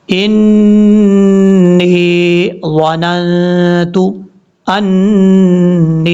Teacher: نون مشدد کی وجہ سے غنہ کریں گے، یہ نون کے اوپر شد ہے، شد کی وجہ سے اس کو نون مشدد کہا جائے گا.